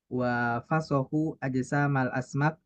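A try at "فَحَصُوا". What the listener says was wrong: Fahasu, jangan dibolak.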